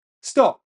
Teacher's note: Perhaps you said stop with an adjective sound. Or maybe you said stop with an unreleased sound. Both of them are completely correct. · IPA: [stɔʔp̚]